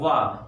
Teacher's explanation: तो आवाज हमारे दांतों के साथ ओठ से निकल रही है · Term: दंतोष्ठ